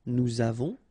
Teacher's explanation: final S not pronounced, and then we make this little link between the two, nous avons